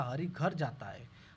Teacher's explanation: बल देकर बोला है हरि को कि हरि घर जाता है तो शब्द बल है।